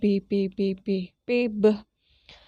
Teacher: Jadi ketika bibir ketemu bibir itu disebut dengan bilabial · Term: suara bilabial